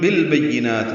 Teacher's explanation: با کو یا سے ملائیں گے، معروف طریقے سے جلدی ادا کریں گے ، نون پر کھڑا زبر ہے تو حرکات لمبا کریں گے،